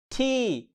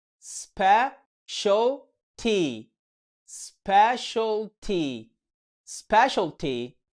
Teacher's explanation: صوت متحرك اسمه long e، وده عامل زي مد الياء عندنا في اللغة العربية، وقته طويل ومكسور خالص